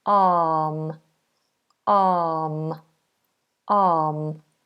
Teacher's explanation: but we do not pronounce that we don't do R arm we do a nice open long vowel sound a so the tongue should be down the mouth wide